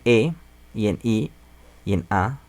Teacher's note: en E y en I y en A, los labios no se redondean.